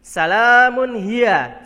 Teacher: Salamun Hiya jadi minimnya berharokat tanwin Kemudian bertemu dengan huruf H Jadi dibacanya jelas ya tanwin bertemu huruf H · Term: izhar halqi